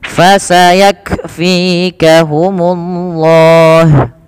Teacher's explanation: Yang kedua, dia punya sifat hamas, mengalirnya nafas. Maka ketika melafalkan kaf sukun, yaitu huruf kafnya yang pertama ditahan dulu nafas, ditahan dulu suaranya, baru alirkan nafas. Fasayak, bukan fasayak langsung, tapi tahan dulu nafas suaranya, baru lepaskan nafasnya.